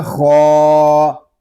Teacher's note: خا کو ہم ایک الف تک کھینچ کر پڑھیں گے کیونکہ خا کے اوپر کھڑا زبر ہے. اس کو ہم پر بھی کریں گے کیونکہ خا حروف مستعلیہ میں سے بھی ہے.